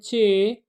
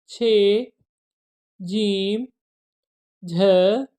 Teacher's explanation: زبان کا پھل جو ہوتا ہے نا، یہ کم لچیلا ہوتا ہے، اور اس میں کیا ہوتا ہے کہ زبان کے پھل میں تالو کی مدد سے ہوا کو روک کر آواز پیدا کی جاتی ہے۔ یہ بات آپ یاد رکھیں گے، چے، چھے، جیم اور جھے تالوئی آوازیں ہیں۔